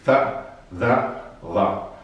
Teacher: Interdentali perché si pronunciano mettendo la punta della lingua tra i denti.